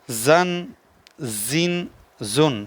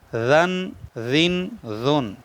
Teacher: سیٹی نکالیں گے تو زا بنے گی، بغیر سیٹی کے زال بنے گی